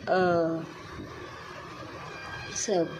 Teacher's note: मध्य स्वर, जिन स्वरों के उच्चारण में जीभ का मध्य भाग काम करता है, जैसे अ।